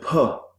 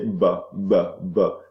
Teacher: your vocal folds do not vibrate so we call that sound voiceless